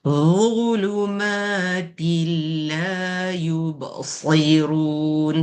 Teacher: Dhu ni satu keluar lidah, dua tebalkan.